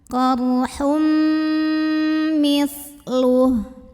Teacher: Lalu berikutnya di sini ada idgham bi gunnah karena ada tanwin dhammah yang bertemu dengan huruf mim. Maka tanwin dhammahnya dileburkan ke mim, masuk ke mim, disertai dengungan. Jadi bunyi amnya tahan.